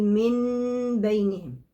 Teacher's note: أول حاجة إن أنا هقلب النون لميم خالصة، ميم، نون ساكنة قلبتها ميم، تمام، اتلغت النون وبقت ميم. تاني حاجة هلامس الشفتين بعضهم ببعض وأحدث غنة زمنها حركتين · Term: حكم القلب